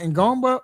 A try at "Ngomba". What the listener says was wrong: The N is silent. Just say Gungba. Yeah, N is silent. No, Gungba.